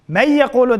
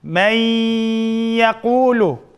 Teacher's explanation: 4 harf kelsa, g'unna bilan birga idg'am qilamiz. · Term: g'unnalik idg'am